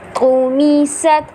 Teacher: قا جو ہے وہ پر پڑھا جائے گا کیونکہ حروف مستعلیہ میں سے ہے